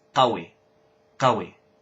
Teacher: they say it awi because they changed the qaf to an a